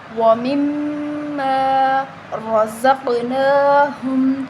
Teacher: را کو موٹا پڑھا جائے گا، را کے اوپر زبر ہے · موٹا پڑھا جائے گا، را کے اوپر زبر ہے، ٹھیک ہے، قاف کو موٹا پڑھیں گے اور قاف حروف قلقلہ ہے تو ہم اس پر قلقلہ کریں گے